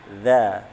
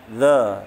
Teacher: Za itu ujung lidahnya disentuhkan ujung gigi seri atas. Za sambil meringis ya, senyum ya.